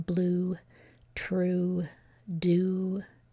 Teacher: a lot of times we drop the Y and we just say the U part. And that happens in blue, true, do.